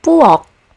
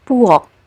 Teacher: this is an aspirated consonant as an initial consonant sound, but when we find it at the end of syllables, it's just pronounced like its basic counterpart. For example, in the word puok, which means kitchen, you don't really hear the aspiration anymore.